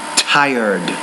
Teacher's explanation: tired he was always great pronounce that not dired but tired you got to pronounce the t with more air with more aspiration in your mouth